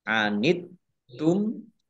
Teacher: taknya dibaca double, ada tasdidnya. Kemudian tumnya dibaca waqaf dan dibaca pendek, tidak ada tanda panjangnya.